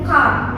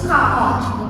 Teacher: kalau misal American itu car, R-nya masih jelas. Tapi kalau British car.